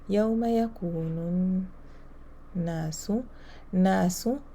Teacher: because we have a nun shadda here, it is the rule of ghunna, the highest level of ghunna. I have to hold here the sound.